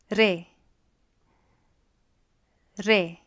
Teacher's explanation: there is a bit of a rolling R there